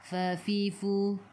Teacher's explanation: gigi atas menyentuh perut bibir bawah